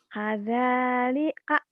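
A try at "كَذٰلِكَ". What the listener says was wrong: Jangan tuh. Jangan diputus-putus. Lurusin.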